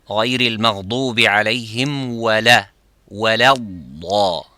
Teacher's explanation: So say the dad is full mouth and not the lam. So by reading fast, you say wala, غير المغضوب عليهم ولا waladda, wala, wala.